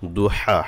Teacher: হা গলা থেকে আনতে হবে, খারা জবর আছে, মদের হরকত এক আলিফ টান হবে, হাতেও এক আলিফ টান হবে।